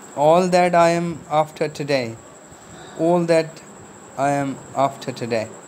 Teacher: T relatively unaspirated when final in that